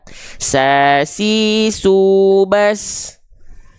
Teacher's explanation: huruf sin kenapa dia bisa mengalir nafas? Karena dia disandingkan dengan sifat rokhwah, mengalir suara.